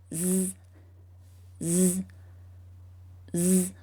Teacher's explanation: Your throat should vibrate as you make the Z sound because it's a voiced sound, which means you do use your voice box to make it. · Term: letter Z sound